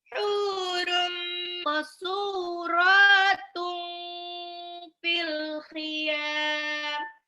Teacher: Itu qaf sukun, baju di toko, bas dipantulkan. Pantulnya kalau qaf pantulnya ke ko, bukan ke ke. Jadi bukan maksuratun tapi mako suratun fil khiyam.